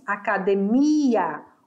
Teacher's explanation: Olha a minha sílaba tônica. A minha sílaba tônica é mi, academia.